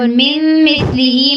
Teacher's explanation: من مثلہ میں میم کی زیر کو اگلے میم مشدد کے ساتھ ملانا ہے اور سا پہ تھوڑا سا ٹائم دینا ہے. دیکھنا کہ اس میں سیٹی کی آواز نہ آئے.